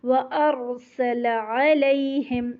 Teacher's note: لام کا زبر لمبا نہیں کرنا، اس لیے میں تھوڑا سا پاز کیا تھا کہ آپ لمبا نہیں کیجیے گا اس کو۔